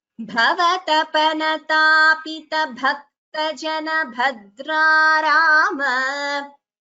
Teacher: Here, bhava, bha is mahaprana, bhava tapana tapita, bhakta jana, bha is mahaprana, bhadra rama.